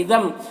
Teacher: ادغام ناقص ہو رہا، غنہ کے ساتھ میں پڑھیں گے